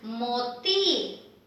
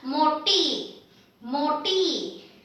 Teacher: Here we have the retroflex T, meaning your tongue is inside when you say this.